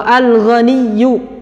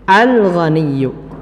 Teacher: Ya, lamnya dibaca jelas, tidak al-ghaniyu, tidak diidghamkan tapi dijelaskan lam sukunnya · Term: izhar